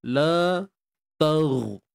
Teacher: Huruf ghain. Yang sukun ni. Dia tak ada lantunan. Cuma kita kena pastikan dia tebal. Lantunan tak ada.